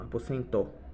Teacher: E o O não vira U, né? Como seria no português, na fala, né?